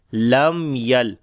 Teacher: After the mim sakin, the next letter is ya. We make again izhar shafawi, the clear sound of mim.